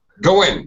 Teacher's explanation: Get rid of your NG. Just go in with an N sound.